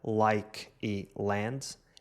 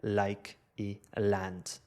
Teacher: Um americano diria ɫike e ɫand, enquanto que um britânico diria like e land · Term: Dark L